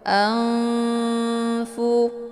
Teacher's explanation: dengan huruf Fa ini di dinamakan dengan Ikhfa Aad cara bacanya nunnya disamarkan kemudian siap-siap menuju ke huruf Fa · Cara bacanya, nunnya disamarkan kemudian siap-siap menuju ke huruf fa. Anfu. Jadi nun ini seakan-akan bacaannya digantungkan.